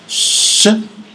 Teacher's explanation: the tongue has a relatively longer region of contacts along the roof of the mouth and articulating Shh